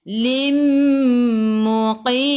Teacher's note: Idgham ma'al gunnah. Masuk bersama dengung, dengung dua harakat.